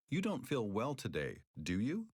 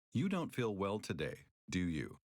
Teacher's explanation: First, imagine you are 80 to 90% sure that someone will agree with you and use rising intonation. Then imagine you are 95% sure that someone will agree with you and use falling intonation.